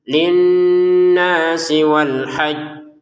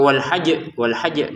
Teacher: kan di sini ada tasdidnya ditekan dulu baru dipantulkan